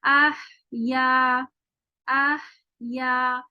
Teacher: اس میں صرف ہمس ہی ہمس ہے، آواز ہے ہی نہیں